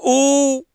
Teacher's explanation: नहीं रहा आ आ आ में गोल नहीं बन रहा उ ओठ आगे आ गए इसका मतलब गोल बन रहे हैं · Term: वृत्ताकार स्वर